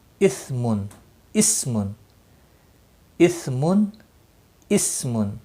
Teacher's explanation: یہ صفیریہ کا سین ہے، یہ سا نرمی سے ادا ہوتا ہے